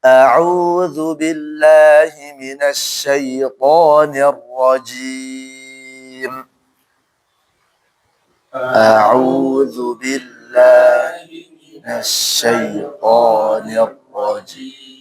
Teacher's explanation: Auzunya jangan sampai ada gunah dan rnya jangan monyong.